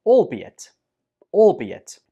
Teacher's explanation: The stress goes on the second syllable, be. albeit, albeit.